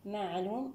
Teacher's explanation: من صفات العين البينية، الاستفال، الجهر، الانفتاح، الإصمات